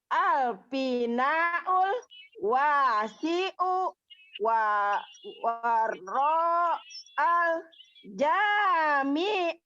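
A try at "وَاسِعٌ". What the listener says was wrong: Iya, tapi berhentinya jangan di ul. Karena ini kan satu ya, satu paket.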